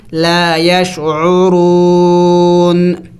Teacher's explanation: آخر میں نون کی آواز نکلنی چاہیے